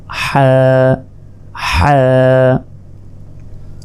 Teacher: হলকের মধ্যভাগ হতে হা উচ্চারিত হয়, হা। গলায় চাপ দিয়ে এটি উচ্চারণ করার চেষ্টা করুন, হা হা।